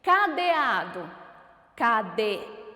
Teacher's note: Eu tenho a vogal A, que é a sílaba tônica da palavra. E ela é a penúltima sílaba. Então, ela é classificada como paroxítona.